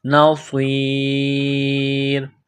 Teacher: صاد کو موٹا کرنا ہے، سیٹی کی آواز پیدا کرنی ہے